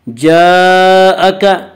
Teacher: جاءک، جاءک میں مد متصل ہوگا، مد متصل وہ مد ہے جس میں حرف مد کے بعد حمزہ اسی لفظ میں آئے۔ مد متصل میں حفص کی روایت میں صرف توسط ہے، توسط کی مقدار 2 الف، 2.5 الف اور 4 الف ہے